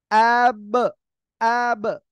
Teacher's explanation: দুই ঠোঁট উচ্চারণের স্থানে কি জোরে শক্ত আকারে ধাক্কা লাগতেছে তাই একটা আওয়াজ অতিরিক্ত উচ্চারণ হচ্ছে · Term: কলকলা